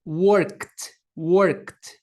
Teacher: Se vocês tocarem a garganta de vocês e pronunciarem esse K, vocês vão perceber que as cordas vocais de vocês elas não estão vibrando. Então a gente vai pronunciar o verbo work ao colocá-lo no passado, o ED vai ter som de T